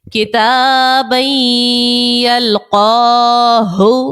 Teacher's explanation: تنوین کے بعد یا حرف یرملون کا ہے، ادغام کا قاعدہ غنہ بھی کریں گے